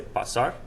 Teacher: When I say pasar, the stress is over that second A right there, right? So now when I'm attaching the se and the la, the stress still stays right there over that A right here.